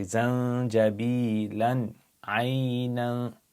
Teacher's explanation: Now if you were to join zanjabila to ayn, you have a tanween and you have an ayn, you're going to pronounce it clearly like izhar. So you say zanjabilan aynan.